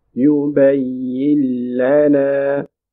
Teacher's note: Because there is a lam coming after noon sakina, that's why we are making idgham without ghunna. You will skip the noon, join ya with the coming lam.